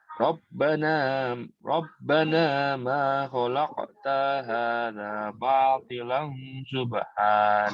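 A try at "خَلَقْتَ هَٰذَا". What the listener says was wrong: Khalaqta hadza, tanya pendek. Khalaqta hadza.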